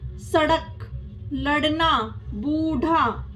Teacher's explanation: फ ब ठीक है अण और ढ यह विकसित व्यंजन है इसका उच्चारण ड और ढ से भिन्न होता है इनके उच्चारण में र शामिल होता है